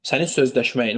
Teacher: Vurğu sonuncu hecadadır. Yəni bir, iki, üç, dördüncü hecaya düşür.